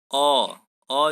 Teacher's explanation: अ जो है ना ज़्यादा पीछे से बोला जाता है ना ज़्यादा आगे से बोला जाता है, इसलिए इसको मध्य स्वर कहते हैं